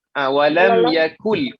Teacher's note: huruf kaf tu tipis, jangan ditebalkan. Walam yakul, kemudian huruf lamnya tadi sama macam yang tadi yang saya ada tegur tadi.